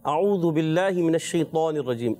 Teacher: इसमें त को मोटा तो किया आपने और मोटा करें। ठीक है? और मोटा करना है क्योंकि एक्स्ट्रा मोटे उरूफ में से हैं।